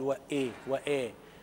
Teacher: ممكن لحن خفي في هذه الآية، إن هو عدم إعطاء كسرة الهمزة حقها